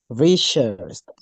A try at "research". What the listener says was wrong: Research. There is an S, not an esh. So research. Search.